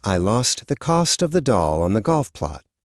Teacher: Short O sounds like ah when you open your mouth wide for the doctor.